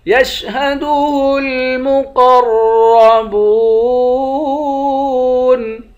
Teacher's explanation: قاف اور را دونوں کو موٹا پڑھیں گے، با کو واو کے ساتھ ملا کر ایک الف کی مقدار کھینچیں گے، آخر میں نون ساکن ہے۔